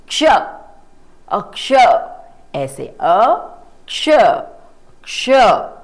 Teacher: जब आप इसको बोलते हैं तो आपकी टंग, आपकी जीभा अंदर को रोल हो जाती है और हवा बाहर निकलती है।